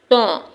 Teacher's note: जब हमारी जुबान का किनारा ऊपर के दो दांतों की जड़ से लगता है। तो हरूफ तौ अदा होता है।